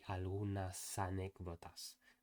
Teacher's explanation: with the S moved over to in front of the A